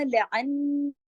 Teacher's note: लअन्ना नून पे तशदीद है, अकमल गुन्ना होगा, फिर ऊपर मद भी है, पूरा हक अदा होगा।